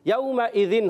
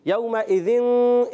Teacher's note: इख्फ़ा करेंगे नाक में आवाज़ ले जाएंगे।